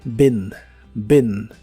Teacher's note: la doble E de esta palabra se pronuncia como una I, pero corta y explosiva, y suena ligeramente como E, pero no es E, es I corta, been, been.